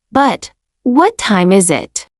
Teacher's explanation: Your voice rises a little in the middle, then falls. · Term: falling intonation